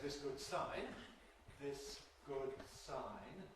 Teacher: the [s] of [ðɪs] is voiceless, so there's a delay in starting the voicing for [g] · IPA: [ˈðɪs ˈg̊ʊd̥ ˈsaɪn]